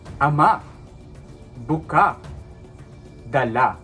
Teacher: Walang saglit na paghaba ng tinig sa penultima nito at walang impit sa dulo. · Wala siyang impit sa dulo at wala siyang dinidiin na mahaba. Hindi siya ama, buka, dala. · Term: mabilis